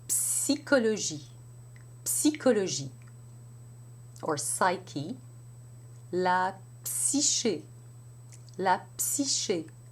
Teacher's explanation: the tongue in position for the S, which is the tip of the tongue close to the upper teeth, to get the friction sound, and then bring the lips together.